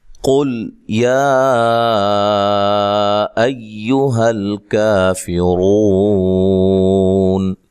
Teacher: قاف کو موٹا ادا کرنا ہے، لام کو ہلانا نہیں ہے. یا پہ جو مد ہے یہ مد جائز ہے، اصل میں یا الگ تھا ایہا الگ تھا تو ملا کے لکھا، لہذا یہ مد جو ہے یہ مد جائز ہے.